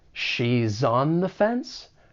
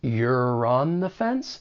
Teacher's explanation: you may be able to link that final consonant sound with the beginning vowel sound in on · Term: linking